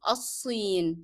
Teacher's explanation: Sod is a hard letter and is a shadda letter at the same time. So you will not be pronouncing the sound of lam in the definite article of al